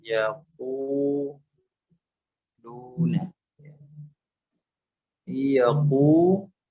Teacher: nun sukunnya masih bersisa dengan ya, tidak sempurna masuk ke huruf ya. Yaquluna dia ada gunnah yang tersisa. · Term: idgham naqis